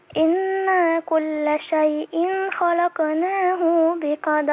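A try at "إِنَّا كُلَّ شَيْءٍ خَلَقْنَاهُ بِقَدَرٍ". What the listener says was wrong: لا، خلقناه بقدر. لا مش خلقناه، خلقناه بقدر. بقدر. خلقناه بقدر على طول، ما تعمليش صلة، ما تزوديش واو.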